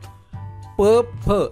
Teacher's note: ज्या व्यंजनांचा उच्चार करताना दोन्ही ओठांचा एकमेकांना स्पर्श होतो त्यांना ओष्ठ व्यंजने म्हणतात